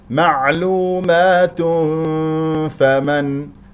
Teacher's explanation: معلومات هذا خطا اذا استمرينا في القراءه لدينا تنوين مع الفاء والفاء من حروف الاخفاء غنه مرققه بمقدار حركتين لان الفاء حرف مرقق